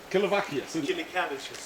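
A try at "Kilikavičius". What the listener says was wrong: Kilikavicius. That's a V, not cabbages. Kilikavicius.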